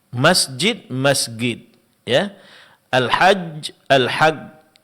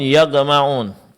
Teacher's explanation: di kalangan orang-orang Mesir huruf jim berubah menjadi huruf ee g